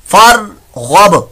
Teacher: बा साकिन के अंदर यहां कलकला हो रहा है